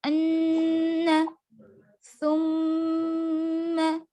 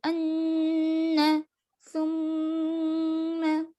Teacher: गुनगुनाना है, सिर्फ नाक में आवाज को रोकना है